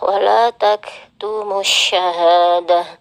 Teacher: tak marbutah kembali menjadi huruf ha ketika sukun